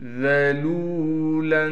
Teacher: جَعَلَ لَكُمُ الْأَرْضَ ذَلُولًا، ذال کو نرم کر کے پڑھیں گے، لام کے بعد واو مدہ ہونے کی وجہ سے لام کو ایک الف کی مقدار کھینچیں گے